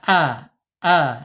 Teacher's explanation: Alif makhrajnya ada di bawah tenggorokan ya.